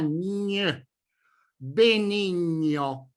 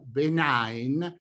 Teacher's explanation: Try to make the N sound more palatal and nasal in color. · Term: digramma GN